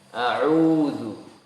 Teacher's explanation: huruf ain itu huruf yang tidak keluar dari hidung